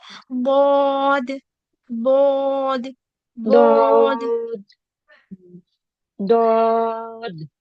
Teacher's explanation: बोलते वक्त पूरे टाइम व है रहेगा नहीं है है और इसम होठों को गोल नहीं करना है और ये जो वा का साउंड आता है ना द वा का साउंड नहीं आना चाहिए